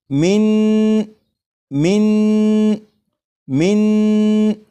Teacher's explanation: नून की जब अदायगी होगी तो नून को पढ़ते हुए ज़बान तालु से लगे।